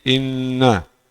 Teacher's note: Huruf bertasydid ini hukumnya ghunah. Ada ghunah yang lengkap atau ghunah yang sempurna. Ukurannya dua harakat.